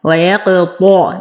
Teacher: نفخم الطاء فهو أقوى الحروف